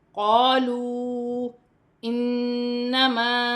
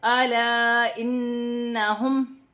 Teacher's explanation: نون مشدد میں غنہ کیا جائے گا